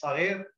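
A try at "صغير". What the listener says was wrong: Zghayr. You know, it's a, it's instead of side, it's a za.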